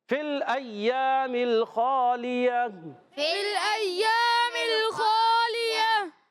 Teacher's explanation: گول تا کو وقف میں ہا ساکن سے بدل دیں گے